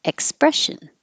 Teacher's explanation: we did some practice with that just the word expression Eck the X letter is a k and an S combination